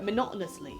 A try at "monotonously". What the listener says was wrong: You're putting an extra M in. Monotonously. No M. Monotonously.